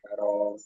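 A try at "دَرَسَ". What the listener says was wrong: র টান হবে না, টান হবে না কোনো, এখানে কোনোটায় টান নেই। দা র আসা।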